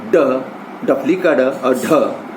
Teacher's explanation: इसके उच्चारण में जीभ ऊपर उठकर झटके से नीचे आती है, जैसे ड, डफली का ड और ढ, ये इस प्रकार की ध्वनियां हैं।